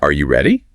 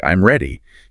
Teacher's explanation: Rising intonation at the end of a question that can be answered with yes or no